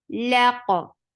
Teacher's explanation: Lam is very short and attached with qaf. Qaf will get sifa of qalqala, and qaf is heavy.